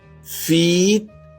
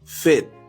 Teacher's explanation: a long vowel with your lips spread. E, a short vowel where your lips are relaxed